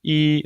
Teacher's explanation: it's a high tone. It's a long, flat tone. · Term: first tone